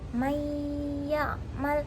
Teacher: Jadi mayyamal, jadi antara nun dan ya itu masih ada dengungnya selama setengah alif atau 3 harokat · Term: idgham bigunnah, idgham